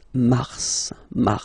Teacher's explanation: then Mar okay so in a way it's an exception because normally final s is not pronounced in French okay we've got some exception and this one is one of them so Mar pronounce the final s